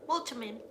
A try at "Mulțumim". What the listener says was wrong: There's an accent on the T. Mulțumim.